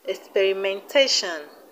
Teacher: We have experimentation, experimentation. The stress is on TAT.